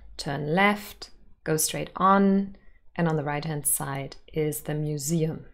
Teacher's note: There is a rising intonation at the end of each short utterance. Usually, there would be a falling intonation.